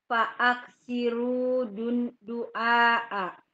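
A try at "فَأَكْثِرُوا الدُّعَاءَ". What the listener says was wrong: Fa'aktsirud du'a. Enggak. Fa'aktsiru itu dibaca pendek karena ada dal di depannya. Fa'aktsirud du'a.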